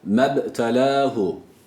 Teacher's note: Evet burada kalkale var B sakin değil mi uzatmıyor cezm olduğu için